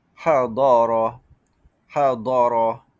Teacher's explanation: Istatalah ini suara memanjang pada dha